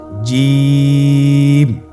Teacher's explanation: এর মাখরাজ হলো জিহ্বার মধ্যখান তার বরাবর উপরের তালুর সঙ্গে লাগিয়ে উচ্চারিত হয়